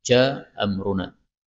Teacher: hamzah pertama boleh dihilangkan